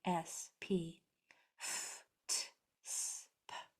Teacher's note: if they're voiceless, then no sound is being made by your vocal cords. Only air, as in an F or a T, S, P, F, T, S, P. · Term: voiceless sounds